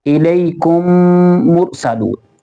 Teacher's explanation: ادغام شفوی، اگر میم ساکن کے بعد دوسرا میم آ جائے، میم ساکن ہوگا، اس کے بعد کوئی اور ورڈ ہوگا، اس کے اندر اور میم ہوگا، تو ہمیں میم کو میم کے ساتھ ملانا ہوگا، گنہ کے ساتھ پڑھنا ہوگا